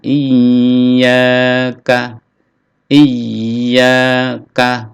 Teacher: ada tasdid ya, ditekan lalu dipanjangkan, ditahan